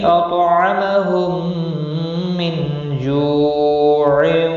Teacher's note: میم ساکن کے بعد دوسرا میم آیا ہے، ادغام شفوی ہوگا، گنہ کے ساتھ پڑھیں گے